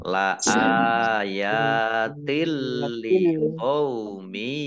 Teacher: Masuk dengan tidak mendengung. Jadi langsung masuk ke huruf lam tetapi tidak mendengung. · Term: idgham bila gunnah